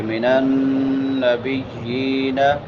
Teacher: نون مشدد ہے. اس پہ غنہ کریں گے. آواز کو ناک میں لے کے جائیں گے اور ایک الف کے برابر لمبا کریں گے.